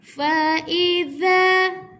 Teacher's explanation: Ada huruf alif, huruf mat, panjang 2 harakat.